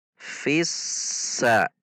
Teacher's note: Karena huruf sin adalah huruf yang tidak tertahan atau rokhwah, maka cara membacanya harus mengalir. Fissa. Tidak dibaca fissa, namun fissa.